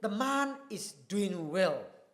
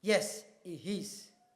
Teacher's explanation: "The man is doing well." That voice falls. That person is certain.